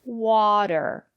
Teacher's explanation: the first syllable is stressed but the syllable after the letter T is not stressed